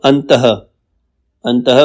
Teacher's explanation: इसका उच्चारण ह की तरह होता है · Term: विसर्ग